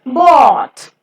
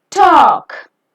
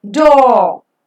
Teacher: O as in caught is a back rounded vowel between half closed and half open position. Distribution-wise, the vowel O occurs in the word initial, medial and final positions in English.